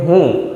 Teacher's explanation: હુંની ઉપર અનુસ્વાર છે પરંતુ એનું ઉચ્ચારણમાં આવતું નથી એટલે ટૂંકમાં એનો થડકારો અનુભવાતો નથી. આ થડકારાનો મતલબ થાય છે